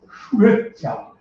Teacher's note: এই ও আর ই মিললেই নতুন স্বর এ হয়ে যায়